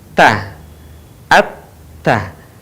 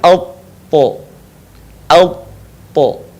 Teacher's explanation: Perbedaannya dengan huruf ta adalah huruf to tidak mengalir nafas dan huruf to diucapkan dengan suara menebal.